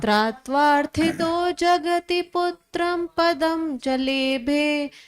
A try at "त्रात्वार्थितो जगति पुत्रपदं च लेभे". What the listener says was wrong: थोड़ा ध्यान दीजिएगा, पुत्रम नहीं है, पुत्रम बोला ना, तो एक अम आ गया तो गड़बड़ हो गया।